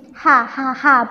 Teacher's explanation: keluarnya dari tengah tenggorokan dia merupakan huruf tenggorokan